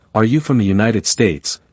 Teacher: If they ask, Are you from the United States? that intonation also elevates near the end.